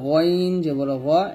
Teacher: আর গইন খ হলকের শেষ থেকে আমরা উচ্চারণ করব